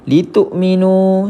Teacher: waw tak berbaris, maka kita jumpa dengan mad asli panjang 2 harokat